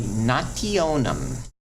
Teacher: You're not going to smack your lips. You're not going to make a ch or a ts sound like Italians would say. No, you're going to say nationem.